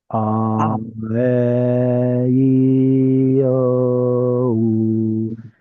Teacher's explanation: Your tongue goes up higher for E and comes back down for the lower note, the lower vowels, and oo, and then e and o are somewhere stuck in the middle. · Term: high vowels